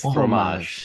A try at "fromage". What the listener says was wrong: You got to roll that R.